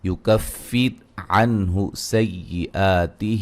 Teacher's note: یہاں را کو باریک پڑھیں گے اور را ساکن سے پہلے زیر ہے